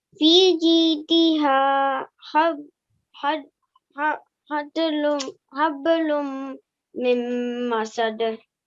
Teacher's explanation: you have to connect these two words, which you did, and you have to keep the meme sound in for 2 seconds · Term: Idgham